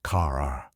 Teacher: American English often has strong R sounds. Car sounds like car-r.